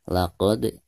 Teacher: Di sini kita memiliki huruf dal, sebuah sukun dal, dan posisinya berada di tengah-tengah bacaan. Jadi, ini dianggap sebagai Qalqalah Sugra, dan harus dibaca dengan suara yang memantul ringan.